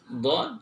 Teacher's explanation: huruf dod keluar dari pinggir lidah, baik kanan ataupun kiri, kemudian ditempelkan, di gigi geraham, baik yang kanan, yang kiri ataupun kedua-duanya ataupun salah satunya.